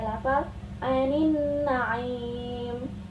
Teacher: alif lam syamsiah karena alif lam bertemu dengan huruf nun sehingga huruf alif lam dibaca masuk ke dalam mulut